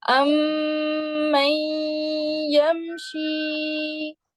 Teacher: یہاں پہ نا غنہ کریں, اچھا سا غنہ ہونا چاہیے آپ کا, 2 کاؤنٹس جتنا